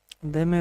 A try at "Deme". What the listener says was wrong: Not dame. Deme. That's a new